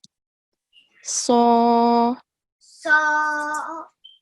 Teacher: So for Sod, I just mentioned earlier that the back of the tongue is raised towards the roof of the mouth. Okay, to make that thick sound.